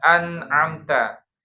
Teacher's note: nun itu kan makhrajnya ujung lidah bertemu dengan gusi. Nun di situ tenggorokan jauh banget kan. Makanya nun jadinya jelas tuh an gitu ya. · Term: izhar